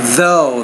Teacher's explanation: that's an interdental consonant you got to get the tongue between the teeth